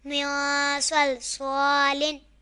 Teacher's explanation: یہاں نون ساکن کے بعد حروف اخفا میں سے سواد آ رہا ہے تو یہاں اخفا ہوگا، یعنی گنہ کر کے پڑھیں گے